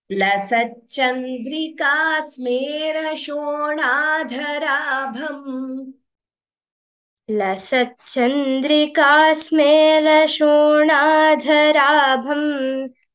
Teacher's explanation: Dha is Mahaprana and Bha is Mahaprana.